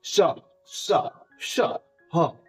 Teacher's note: मुह से हवा निकल रहा है इसलिए इसका नाम उष्म व्यंजन दिया गया है